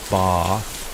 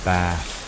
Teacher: in the southwest, they have this ae vowel. So, but they lengthen it.